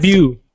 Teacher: So we don't pronounce the T, so just debut.